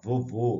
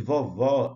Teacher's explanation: Vovô, circunflexo, som fechado. Olha a importância disso. E vovó é o agudo, som aberto